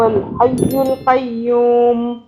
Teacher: جن جن کے اوپر تشدید ہے سب کی ہم نے 2 مرتبہ آواز بنائی، ایک پچھلے حرف سے ملا کے، دوسرے اگلے حرف کے ساتھ